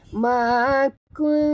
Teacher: Ya, kalau nak jadikan ikhfa, dia kita kena sorok, sembunyikan bunyi nun ini ke dalam huruf ta. Jadi bunyi nun ini jadi samar-samar